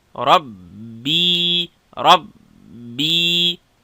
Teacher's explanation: را ډکه با او یا نرمه